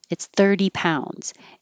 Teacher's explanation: and the t changes to a d